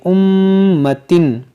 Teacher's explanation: یہاں میم مشدد ہے تو اس میں غنہ کریں گے